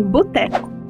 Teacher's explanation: sílaba bo, em boteco, que pode ser falada com a vogal alta U